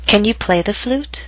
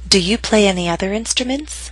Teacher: With primary stress in the middle of these questions, remember that your voice must continue to rise until the very end. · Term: rising intonation